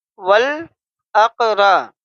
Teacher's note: اق، ول اق، را زبر را، ول اق را۔ را کے اوپر زبر ہے اس لیے را کو ہم پر پڑھیں گے، موٹا پڑھیں گے۔ ول اقرا، با یا زر بی، ول اقرا بی، نون زبر نا، ول اقرا بینا۔